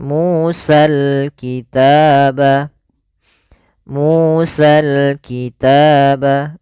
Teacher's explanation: dibaca dengan sempurna huruf lamnya dan tidak ada dihilangkan